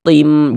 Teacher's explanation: Tin itu jangan tapi tim. Kemudian di bagian tim di bagian situnya tuh kita tahan sejenak suara kita gunahkan. Kita panjangkan kira-kira sepanjang dua harakat. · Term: idgham ghunah